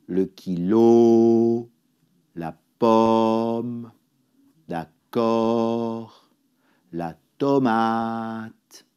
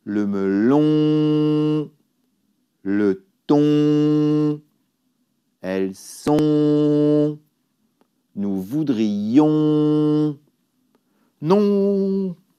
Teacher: Le son on est nasal, l'air passe par le nez et par la bouche. On ne prononce pas le n.